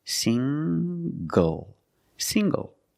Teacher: the n g makes the nasal sound plus the hard G